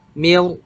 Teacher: Harusnya nanti ro yang sukun sebelumnya kasrah itu tipis, tapi karena depannya huruf isti'la ya, maka dia dibaca tebal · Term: ro tebal